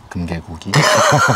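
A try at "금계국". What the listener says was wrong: 금개구기 말고 금개국. 국자 발음 확실하게 해줘야 돼.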